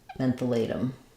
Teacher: The O would say an O, and then latum, we would make this into a flap.